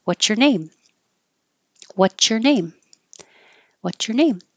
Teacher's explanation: stuck on this before we usually say whater whater and and that's because we're kind of dropping the S and connecting the T and the Y and a T and A Y make a cha